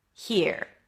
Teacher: It's an h sound then a high e. He. And then you shift to the R here. Make sure the E is long enough here.